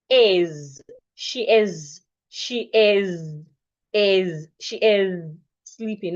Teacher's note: in the word is the s makes the sound of zed